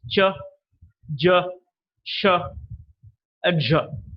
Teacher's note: the tip of the tongue touches the back of the alveolar or the teeth Ridge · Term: post alveolar sounds